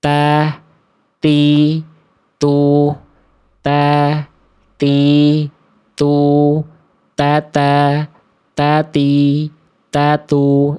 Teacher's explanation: Poin kedua pada huruf ta berharokat adalah dilafalkan dengan menjulurkan ujung lidah ke luar mulut.